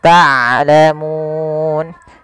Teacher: Harusnya dia ain dari tengah tenggorokan kita, dan ain punya sifat bainiyah. Di antara syiddah dan rokhawah, tidak dialirkan suaranya dan tidak terlalu ditahan suaranya, tapi di tengah-tengah di antara keduanya.